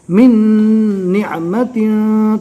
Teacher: जज्म वाले हर्फ के बाद तशदीद वाला हर्फ आता है तो जज्म वाले हर्फ को नहीं पढ़ा जाता, लिहाजा में नून नहीं पढ़ना है, मिम को डायरेक्ट नून से मिलाना है।